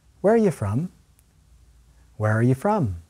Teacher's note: Americans often reduce or shorten the words in the middle, the verb be and the subject you.